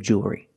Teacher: it's still a dark L because you have the L before a consonant